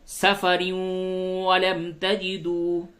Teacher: تنوین کے بعد واو ہے، یہاں پہ ادغام مع الغنہ ہوگا